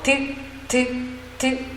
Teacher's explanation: 드는 막았다가 터지죠.